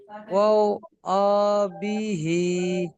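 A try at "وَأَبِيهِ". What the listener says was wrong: জি বিহি ওয়া বিহি জি বিহি বিটা টান হবে বিটা, এই যে বিটা টান হবে জি।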